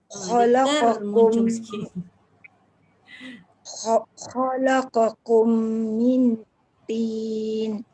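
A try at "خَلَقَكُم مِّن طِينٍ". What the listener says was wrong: Lidah melekat sikit. Bawah sikit. Melekatlah Bunda lidahnya. Mil, jangan min. Dia tergantung lidah tu. Miun tak boleh lah. Miun tak boleh sebab Bunda tolak bibir. Dia bukan bibir tau.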